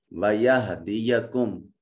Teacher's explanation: میم ساکن ہے، اس کے بعد نہ با ہے نہ میم ہے، لہذا میم کو ظاہر کر کے ادا کریں گے.